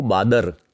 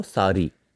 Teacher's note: ल और ड़ के स्थान पर कई जगह र का प्रयोग देखने को मिलता है।